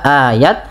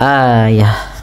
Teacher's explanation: Kemudian pada lafal ta yang di sini ayah apabila ada ta suku, maaf ta marbutah berada di akhir bacaan huruf tanya-nya kita ganti kita rubah menjadi huruf ha yang dimatikan maka tidak lagi dibaca ayat tapi dibaca ayah